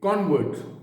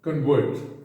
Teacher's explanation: When you use the second part, it becomes a verb. पहले हिस्से पे जोर देंगे, उसको नाउन की तरह इस्तेमाल करेंगे, दूसरे हिस्से पे जोर देंगे, उसको वर्ब की तरह इस्तेमाल करेंगे।